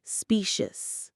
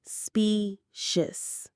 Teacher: The stress is right at the beginning on that specious.